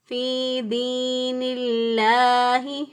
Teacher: نون کے نیچے زیر ہے، زیر ہونے کی وجہ سے لفظ اللہ کے لام کو باریک پڑھا